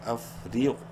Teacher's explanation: رو کو باریک پڑھیں گے زیر کی وجہ سے لیکن غین کو منہ بھر کے پڑھیں گے، بولڈ لیٹرز میں سے ہے افریق۔